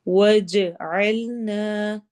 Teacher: جیم میں قلقلہ ہوگا، جیم کی آواز ہلے گی۔ عین نا الف مدہ اگین 2 حرکہ لمبا ہوگا۔